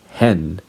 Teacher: the last sound of hen is a nasal sound, which is the N sound